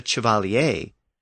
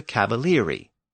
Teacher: the French words had the CH sound change at the beginning, and the Italian words retained the original Latin CA at the beginning